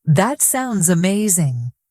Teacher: Your voice should rise slightly at the end. That's what makes it sound natural and expressive.